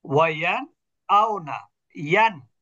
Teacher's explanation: নুনটা স্পষ্ট হামজা কন্ঠনালীর অক্ষর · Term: ইজহার